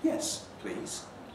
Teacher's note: if please is a sort of a tag marking a request as polite it normally takes a lowish rise